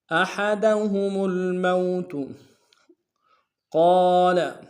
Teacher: قاف کو موٹا ادا کریں گے، قاف کے سالف مدہ ایک اختیار میں کھینچیں گے، لام کو لمس ادا کریں گے۔